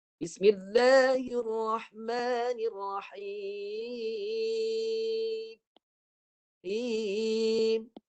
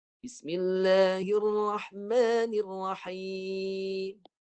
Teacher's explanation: selepas bibir rapat suara tertahankan bibir jadi Babel suatu naik ke rongga hidung jadi akan bunyi